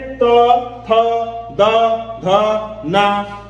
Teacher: जब हम बोल रहे हैं तो हमारी जो जीभ है वह दांतों को टच कर रही है, स्पर्श कर रही है, इसलिए वह जो है उसका उच्चारण स्थान, इन वर्णों का उच्चारण स्थान दंत हो जाएगा।